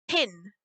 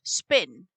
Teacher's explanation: the P in spin is voiceless and unaspirated, like the Gaelic B. So there you have the unlenited B in Gaelic is voiceless and unaspirated b, p.